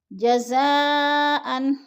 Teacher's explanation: جزاء مد متصل، حمزہ اسی کلمے میں ہے، حروف مدہ کے بعد 4 الف مد ہے، 4 الف کے برابر ہم نے اس کو کھینچ کر پڑھنا ہے